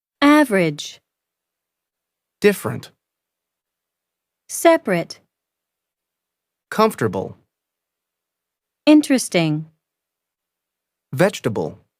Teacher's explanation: the vowel immediately after a stressed syllable is sometimes not pronounced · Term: unpronounced vowels